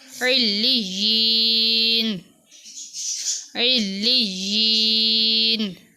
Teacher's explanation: عین لام زیر عل، لام یا زیر لج، علج، یا زیر یی، علیجی، نون زبر نا، علیجینا۔ یہاں پر یا کے ساتھ یا ہے، اس لیے یا کو تھوڑا لمبا کر کے پڑھیں گے۔